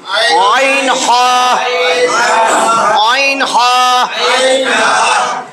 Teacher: পুরুষের মোটা গলার মাঝখান মধ্যভাগ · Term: দুই নম্বর মাখরাজ